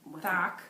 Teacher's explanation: That is a frontal lisp, and that means that the tongue is just in the front where it shouldn't be. It should be kind of behind the teeth.